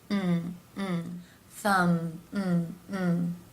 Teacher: the M consonant sounds where the lips come together